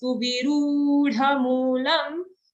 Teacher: Su and vi are short, but the ru is a nice long dirgha sound.